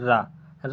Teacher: जीभ की नोक वायु से रगड़ खाकर कांपती है उसे लुंठित व्यंजन कहते हैं जैसे आपका हो जाएगा रा रा